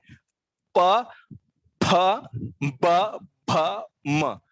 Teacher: हालांकि फ बोलने से दांत और होंठ के बीच में फ ये उच्चार होता है, और वो इस वर्ग से मेल नहीं खाता। इस वर्ग में सारे अक्षरों का उच्चार दोनों होंठ छूते हुए करना है।